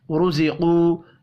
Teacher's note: را کو اور قاف کو پر پڑھنا ہے